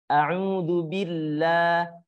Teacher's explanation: lam jalalah ketika sebelumnya huruf berharakat kasrah atau barusnya di bawah maka huruf lam jalalahnya itu dibaca tarqiq atau tipis